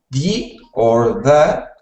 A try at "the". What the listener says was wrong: So when you were speaking, you were saying it like a D, like duh or D. Make sure that you are making that TH sound like you just made was perfect. So the. Or the.